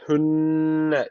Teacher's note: derken şeddeli nun var mutlaka bir Elif miktar tutuyoruz